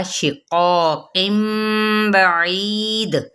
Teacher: قاف پر مد صرف الالف بھی ہے تو الف بھی ساتھ یہ قاف جو موٹا ہے حروف مستعلیہ میں سے تو الف اس کے تابع